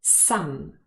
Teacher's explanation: it's the full form and the vowel sound is ah some however usually this word is not stressed and it occurs